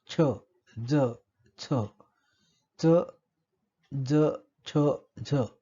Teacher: या उच्चारांच्या वेळी आपल्याला आपली जीभ दंतमुळापर्यंत पोहोचते, त्या ठिकाणी हवेला अडवणूक होते आणि मग उच्चारण स्थान जे आहे ते दंतमूळ आणि उच्चारण अवयव जो आहे तो जिभेचं टोक, याला म्हणून या ध्वनींना आपण दंतमुली असं म्हणतो. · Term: दंतमुलीय ध्वनी